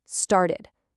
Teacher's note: Ah, that's our special case. It ends in a t sound, so we add a syllable.